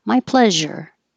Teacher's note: This one S before the URE sounds like a zh.